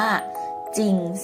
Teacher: ถึงจะมีจอจานรอเรือเป็นตัวพยัญชนะต้นนะคะแต่ก็ออกเสียงแค่จอจาน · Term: คำควบกล้ำไม่แท้